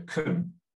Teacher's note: if I'm stressing change and I'm not stressing can, then the vowel sound becomes quite different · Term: schwa sound